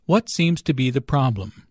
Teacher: Notice that the intonation falls at the end of the question.